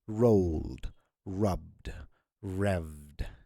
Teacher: Pronounced as D for the verbs that end in voiced consonants. So when there is a consonant that is ending a word, and then you're trying to have a past tense of it, it is pronounced as D.